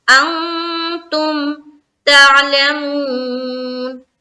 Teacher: میں اخفا کیا. کیوں؟ کیونکہ نون ساکن کے بعد تا ہے